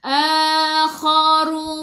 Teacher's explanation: khi khu biar ada angin, biar menggelegak. Ru baca dengan tebal, ra baris depan.